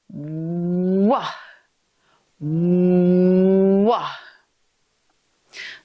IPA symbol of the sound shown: w